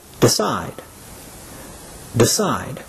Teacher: on on the last syllable take for example the verb decide the stress is on the second syllable